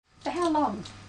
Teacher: this is a question too but it has a falling tone a falling tone is used with information questions there are questions